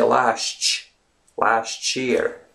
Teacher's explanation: Last year, it's not, well, you can obviously say last year, but when you speak it out loud in conversational English, when you speak a bit faster, you say last year. It's as if there's a TCH sound in between